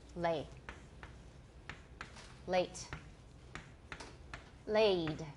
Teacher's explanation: you can hear very clearly that it's an AE it's a diphthong